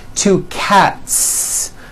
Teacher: there's no voicing at the end of that word the s remains unvoiced · cat cat ends with an unvoiced t one cat two cats again the s ending is unvoiced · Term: unvoiced s